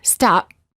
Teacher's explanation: when they say the letter P in the word stop the lips stay closed no air comes out this creates almost a silent version of the sound P or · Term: half P